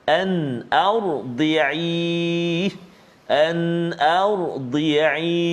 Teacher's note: kita kena tebalkan bacaan bunyi pada huruf ra sukun ataupun ra yang berbaris mati